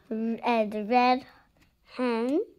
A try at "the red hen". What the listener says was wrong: There's no E here.